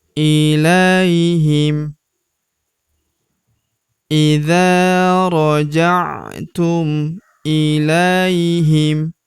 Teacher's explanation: Huruf la kita ayun sekali karena terdapat ya sukun di depannya